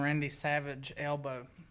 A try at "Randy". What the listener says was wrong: He said practicing his Randy Savage elbow, but he pronounced the word Randy Rundy.